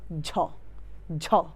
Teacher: ঝ বললে বাতাসটা বের হয় বেশি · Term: মহাপ্রাণ